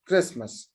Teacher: I dropped the ta sound in this word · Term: elision